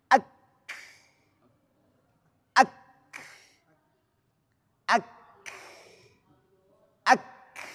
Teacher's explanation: ketika tertahan itu namanya syiddah ketika terlepas baru hames